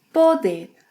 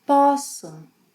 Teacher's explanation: in the infinitive has a closed -o sound. But when conjugated in the Present Tense, it opens.